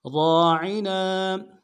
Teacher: را کے ساتھ الف مدہ ہے، ایک اعتدال میں کھینچیں گے، عین کو نرم سے ادا کریں گے، نون کے ساتھ الف مدہ ایک اعتدال میں کھینچیں گے · را کو موٹا کریں گے، را کے ساتھ الف مدہ ہے، ایک اعتدال میں کھینچیں گے ، عین کو نرم سے ادا کریں گے، نون کے ساتھ